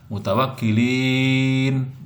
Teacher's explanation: Ini mad arid disukun, yaitu mad tabi'i yang berada di akhir ayat, itu namanya mad arid disukun. Dibacanya panjang sesuai dengan secukupnya napas kita.